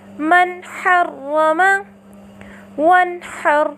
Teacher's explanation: نون ساکنہ کو اس کے مخرج اور صفات کے ساتھ ظاہر کر کے پڑھا